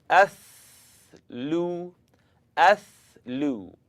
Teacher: it's the tip of my tongue coming up out at the edge of my top teeth now i'd just like you to simply blow the air between